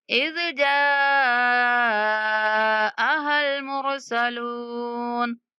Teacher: जाअ 5 second तक जा को खींचना है।